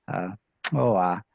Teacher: has a bilabial click, so kissy sound